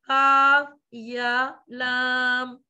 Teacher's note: یا کو چھوٹا رکھیں گے اور کاف اور لام کو لمبا کریں گے